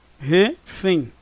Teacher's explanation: O fém é a sílaba tônica. É a última. Refém. Então significa que é uma oxítona, tá?